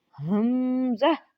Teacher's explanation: یہ ہا اس کو سینے سے نکالنا ہے، حلق کے نیچے والے حصے سے۔ جب آپ اپنے سینے پہ ہاتھ رکھو گے نا تب آپ کو یہ نکلتا ہوا محسوس ہوگا۔